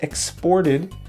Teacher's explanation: the stress is on the second syllable exported